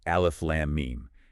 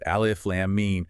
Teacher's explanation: >> You don't just say the letters. You have to stretch the vowel sound inside the name of the letter out for up to six counts. So you aren't just quickly rattling off alf lamb meme. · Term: obligatory elongation